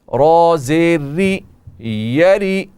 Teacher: را باریک ہوگی کیونکہ را کے نیچے زیر ہے